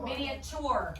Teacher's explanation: That T kind of sounds like a CH, doesn't it? But do I hear the long U?